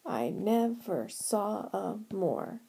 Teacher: it seems like my voice lands on or emphasizes the word more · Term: stress